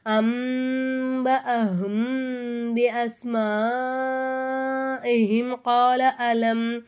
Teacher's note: மீமே சாக்கினை கொஞ்சம் குன்னா செஞ்சு ஓதணும்